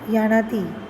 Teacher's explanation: ज के स्थान पर य हो जाता है